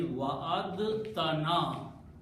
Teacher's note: you pronounce ta as a shadda, which means pronounce ta twice. Don't pronounce dal.